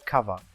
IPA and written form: kʌvə (cover)